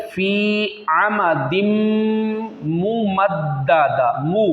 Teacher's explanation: तनवीन और मीम को दोनों को मिलाना है, गुन्ना भी करना है